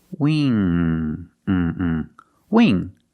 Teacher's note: The sound is more closed, E, we. And the NG makes the sound where the back of the tongue is touching the back of the roof of the mouth